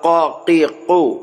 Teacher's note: قاف کا مخرج زبان کی جڑ اور لحات، زبان کی جڑ کو لحات پر لگائیں گے تو 2 نقطے والا قاف ادا ہوگا، قا قی قو۔